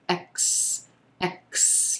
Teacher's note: The letter X is going to sound like 2 consonant sounds coming together here. It's going to sound like the K and the S sound. X, X. You want to make sure that you're getting both of those sounds in there.